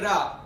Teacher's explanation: उच्चारण में आपकी जो जीभ है तालु को टकरा कर लुढ़कती हुई लगती हो, तो ऐसे वर्णों को क्या बोला जाएगा दोस्तों, लुंठित या प्रकंपित व्यंजन कहा जाता है। · आपकी जो जीभ है वो किससे टकरा रही है, तालु से।